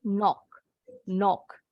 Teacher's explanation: Atau kalau orang Inggris lebih bulat, knock.